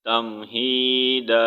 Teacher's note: یہاں پر بھی وقف کی صورت میں دا پڑھیں گے، ٹھیک ہے، دن نہیں پڑھیں گے